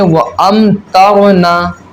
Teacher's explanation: اور جیسے وَأَمْطَرْنَا، تو دیکھیے میم ساکن کے بعد طا آ گیا، جو تاکہ با اور میم میں سے ہے نہیں، با اور میم کا علاوہ ہے، تو یہاں میم ساکن میں جو ہم کیا کریں گے؟ اظہار شفوی کریں گے، یعنی غنہ نہیں کریں گے، سمپل پڑھیں گے